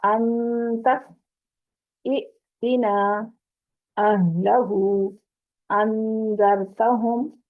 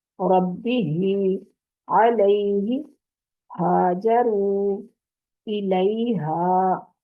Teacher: یہ دونوں حروف حلق کے نیچے والے حصے یعنی انتہائی حلق سے لاسٹ والا حصہ جو سینے کی طرف ہے وہاں سے ادا ہوتے ہیں